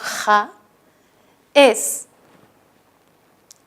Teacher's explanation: el fonema fricativo velar, que es el sonido ja